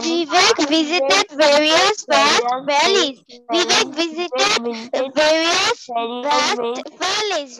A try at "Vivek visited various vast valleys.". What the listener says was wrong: ওকে, very good, সুন্দর হয়েছে।